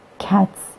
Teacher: The plural morpheme has been devoiced to se, because t is voiceless. Cats. In assimilation to the voiceless t which precede it.